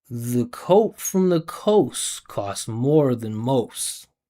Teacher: I'm not separating the individual words. You can't hear where one word starts and one word stops. It's all blended together. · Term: one connected stream of air